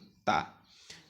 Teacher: জিহ্বার মাথাটা সামনের উপরে দুই দাঁতের গোড়ার সঙ্গে লাগিয়ে উচ্চারণ হবে